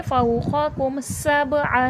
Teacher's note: सीन हुर्फ़ सफ़ीर है, सख्ती सीठी के साथ पढ़ा जाएगा।